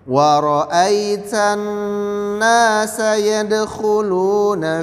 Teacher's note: Ingat di sini ada hukum madlin, di ai-nya tan ada hukum ghunnah, dibaca 2 sampai 4 ketukan, didengungkan.